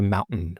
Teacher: And across the United States, it's very common across like media, podcasts, audiobooks, like radio, you say mountain, where you get a glottal stop followed by a syllabic nasal, mountain.